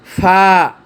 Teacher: দাঁতের মাথা ও নিচের ঠোঁটের পেট হতে উচ্চারিত হয়